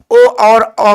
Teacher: ओ और औ का उच्चारण कहाँ से हो जाए, कंठ और ओठ से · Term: कंठोष्ठ